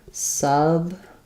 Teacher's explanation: if we're talking about the noun, which we are if we're talking about plurals, we have first syllable stress